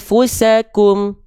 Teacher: Lalu di sini ada nun sukun ketemu sama huruf fa. Ya, dia harus disamar dengungkan bunyiannya. Tahan 2 harokat